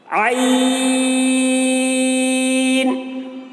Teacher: इस तरीके से आईन, देखिए आईन हलक से अदा करते हैं और इसको भी ज्यादा खींच रहे हैं क्योंकि ये भी तीन हरूफ से मिलकर बना है, आईन या नून से। आईन हलक से ताकत लगा के बोलना पड़ता है, हलक पे जोर डालना है, ताकत लगा के बोलेंगे, हलक को खोलेंगे तब इसकी अदायगी सही होती है।